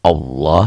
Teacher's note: Tabkhim. Lafaz Allah dibaca tabkhim atau dibaca tebal, berbunyi Allah, seakan-akan ada W-nya di sini ya, tapi W-nya jangan tertahan, jangan monyong. Allah seperti berbunyi O.